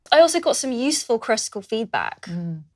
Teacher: is using a glottal stop to connect the word 'got' to the word 'some'. · does not move her tongue at the end of the word got.